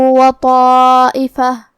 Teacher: کلمت طائفہ میں یہاں حرف الطا ہے اور تو حروف التفخیم میں سے ہے تو ہم یہ حرف کو موٹی آواز میں پڑھیں گے۔ الف پہ مد کا علامہ ہے، یہاں مد واجب متصل ہے، اور مد واجب متصل کا معنی ہے کہ حرف المد اور اس کی وجہ جو کہ حمزہ ہے دونوں ایک ہی کلمہ میں ہو۔